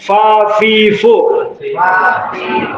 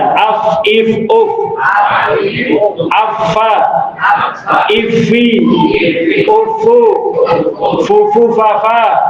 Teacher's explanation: Dalam ilmu ini dipelajari mana huruf-huruf yang keluar napas dan mana huruf yang tertahan napasnya saat diucapkan. Seperti kalau kita membaca huruf fa, itu ada udara, ada napas yang berhembus dari mulut kita